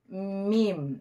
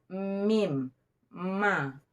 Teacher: Yang pertama, dua perut bibir bagian luar. Dua perut bibir bagian luar, keluar daripadanya huruf mim. Mim. Nah, tertekan.